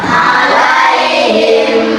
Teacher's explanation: dimasukkan dimasukkan sepanjang dua sampai tiga harakat dibaca tanggung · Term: idgam mimi